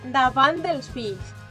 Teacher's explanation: La T és sonora en aquest cas perquè darrere hi ha una consonant sonora com és la D.